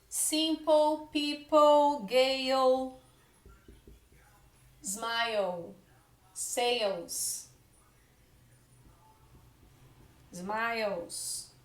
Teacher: as palavras que tem LE, você vai falar com som de OU.